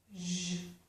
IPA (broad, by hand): ʒ